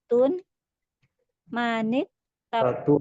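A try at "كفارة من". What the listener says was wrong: Kafaratu man ya, tidak ditanwin ya afannya.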